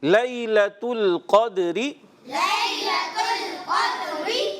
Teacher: لیلہ حرف لین ہے، لئی یا لین کو نرمی سے ادا کریں گے. لیلۃ القدر دال حرف قلقلہ سے ہے.